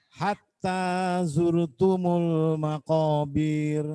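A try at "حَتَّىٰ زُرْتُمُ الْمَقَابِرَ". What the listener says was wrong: Makobir, nggak boleh panjang.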